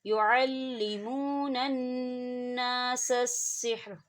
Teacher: نون مشدد ہے، یہاں پہ غنہ ہوگا۔ يُعَلِّمُونَ النَّاسَ السِّحْرَ، ٹھیک ہے، یہاں چھوٹا سا قوف ہے، آپ یہاں رک سکتے ہیں، اگر آپ نہ بھی رکیں تو کوئی ایشو نہیں ہے۔